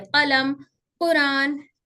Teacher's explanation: कौफ हर्फ को गले के पीछे से प्रोनाउंस किया जाता है जब जबान सॉफ्ट पैलेट से लगती है